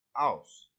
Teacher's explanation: in Eliza's Cockney accent, she might pronounce house as ouse and hat as at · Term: H dropping